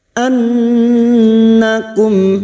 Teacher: nun yang bertasdid, gunnah musyaddadah, kita dengungkan selama 3 harokat